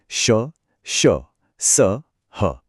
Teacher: इनको बोलते समय मुंह से हल्की गर्म हवा निकलती है, एक घर्षण होता है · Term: ऊष्म व्यंजन